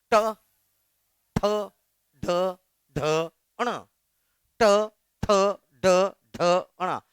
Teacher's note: इसमें जीभ पलट के ऊपर दीवार को टच करेगा, तब वो मूर्धन्य कहलाएगा।